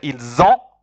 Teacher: when you say ils ont, the sound is like a Z, it means they have